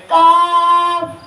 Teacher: زبان کی جڑ اور تالو کے سخت حصے سے ادا ہوتے ہیں